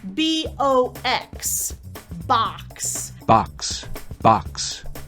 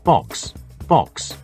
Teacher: speakers of British English are much more likely to use the /ɒ/ rounded version